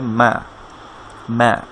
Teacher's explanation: মিমের উচ্চারণ স্থান হচ্ছে আপনার দুই ঠোঁট থেকে